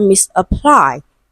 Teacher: stressed on the third syllable, the last syllable